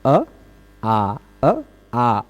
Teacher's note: अ बोलने में कम मुह खुलता है आ बोलने में थोड़ा सा ज्यादा खुल जाता है